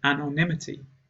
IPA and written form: ˌæn.ɒnˈɪm.ə.ti (anonymity)